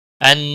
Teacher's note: ان نون مشدد پر غنہ ہوگا